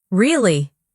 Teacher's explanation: But if they say, Really? with a flat tone, they're serious, or even annoyed.